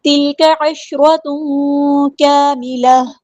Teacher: عین کو وسطی لیکن زور سے ادا کرنا ہے